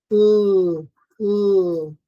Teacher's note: It's unaspirated. It's alveolar, meaning the tongue tip touches the alveolar ridge, and it's a liquid because the articulators touch each other, but the hole between them is big enough to not to have a friction, not to have friction. · It's a liquid because the hole between the articulators is big enough such that there's no friction resulting. This one is voiced. It's unaspirated. It's alveolar.